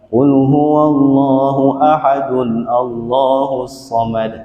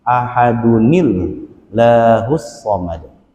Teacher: Harus diganti tanwinnya itu dengan nun sukun berharokat kasrah.